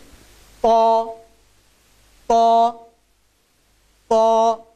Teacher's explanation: এই হরফটির উচ্চারণ হয় জিহ্বার আগা সামনের উপরের দুই দাঁতের গোড়ার সাথে সম্পৃক্ত হয়ে এই হরফটির উচ্চারণ হয়।